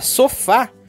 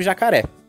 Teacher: oxítonas, quando a última sílaba é tônica.